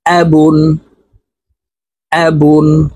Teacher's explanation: তো এই আলিফকে হামজাহ বলে উচ্চারণ করতে হবে হামজাহ জবর আ দুই পেশ বুন তাড়াতাড়ি করে নুন যুক্তভাবে পড়তে হবে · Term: তানবিন